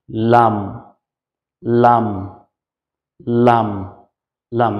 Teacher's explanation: জিহ্বার দুই সাইডের যেকোন এক কিনারা আপনি ধরতে পারেন ধরে তার উপরের দাঁতের মাড়ির সাথে লাগিয়ে লাম লাম লাম লাম মানে জিহ্বার যেকোন একটা কিনারা মাড়ির দাতের